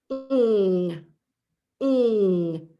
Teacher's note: So I'm using my voice. My tongue is way in the back of my mouth. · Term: NG sound